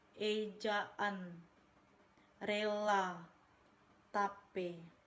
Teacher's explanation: Fonem E adalah vokal sedang depan bulat. Vokal ini dibentuk dengan daun lidah dinaikkan tetapi agak lebih rendah dari I. Vokal ini disertai dengan bentuk bibir netral, artinya tidak terlentang dan juga tidak memudar, misalnya ejaan, rela, tape.